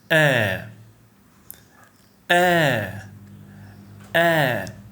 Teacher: It's the sound you make when you suddenly stop airflow in your throat. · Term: glottal stop